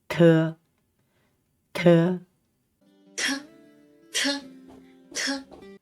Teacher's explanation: the tongue to the upper R of the teeth and then drop our tongue quickly to force the air out and so the sound is aspirated